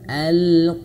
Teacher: Kemudian huruf sini huruf tak marbutoh atau ha ya, menjadi ha yang besar, ha yang berada di pangkal tenggorokan. Maka alirkan anginnya dengan angin yang besar.